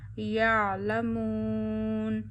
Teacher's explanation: आइन को वस्ते हलक यानी गले के दरमियान वाले हिस्से से अदा करिए।